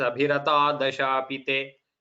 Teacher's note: And in the here, so in the second line, Abhirataha, if we stop, Visarga comes here. So during the Sandhi, the Visarga Lopa happens. Visarga disappears.